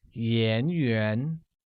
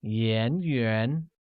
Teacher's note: is pronounced with the mid rising tone on both the A's making it Yin Yin note that as